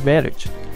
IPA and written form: ˈvɪl.ɪdʒ (village)